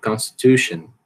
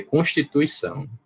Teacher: Você quase não escuta isso aqui, Você só tem um pouquinho de força na primeira e na terceira sílaba. Em português não, você tem que dizer constituição.